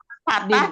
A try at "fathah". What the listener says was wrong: fathah ya, bacanya bukan patah ya, fathah. Patah sama patah beda. Patah bukan patah, fathah.